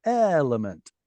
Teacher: element is under the stress so it's nice and long